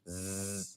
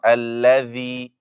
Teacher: When you say z, your tongue stays inside. Z, no tongue coming.